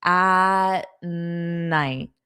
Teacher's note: So here this T is actually more of a flat T. At night. So it would have been better if I had it as a flat T cuz I'm not pronouncing it.